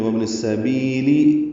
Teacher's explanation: وابن السبیلی لام کے نیچے زیر ہے، وہ پڑھیں گے کئی یا لین ہے، معروف طریقے سے جلدی ادا کریں گے، کئی زیادہ لمبا نہیں کر سکتے